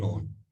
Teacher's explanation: طرف اللسان جب ثنایا، رباعی، انیاب کے مسوڑوں کو لگے گا تو نون